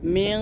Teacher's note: সাকিনের পরে আসে তাহলে গুণনা করতে হবে মিং এখানে যেহেতু নুন সাকিনের পর কফ আসছে আর কফ যেহেতু মোটা হরফ তাই গুণনাটা এখানে মোটা করতে হবে